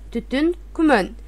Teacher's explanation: Биринчи муунда ү, соңку муунда ү же өгө өзгөрөт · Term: ичке үндүүлөр